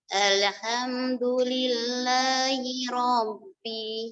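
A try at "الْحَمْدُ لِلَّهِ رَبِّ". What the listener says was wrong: Bukan ro-nya yang panjang. Bukan Rabbi. Rabbi.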